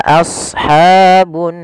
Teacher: ro tafkim ro yang harus dibaca tebal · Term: ra tafkhim